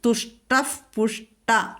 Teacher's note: വിസർഗം പിന്നെ തുഷ്ടഹ കഴിഞ്ഞിട്ട് പ വന്നിരിക്കുന്നു അവിടെ നമ്മൾ ഫ ചൊല്ലും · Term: ഉപദ്മാനീയം